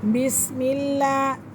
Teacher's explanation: لفظ اللہ کی لام سے پہلے زیر ہے تو اس لیے لفظ اللہ کی لام کو باریک پڑھیں گے